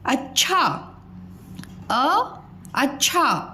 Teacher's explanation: अब च के उच्चारण में समय कम लग रहा है तो इसलिए यह आधा च हो गया